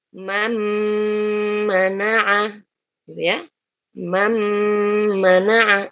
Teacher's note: Mentasydid huruf mimnya. Karena nunnya kita masukkan. Disertai dengan gunnah. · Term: idgham kamil